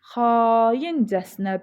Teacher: A uzanır, vurğu da 2-yə düşür. Çünki casına vurğu qəbul eləmir.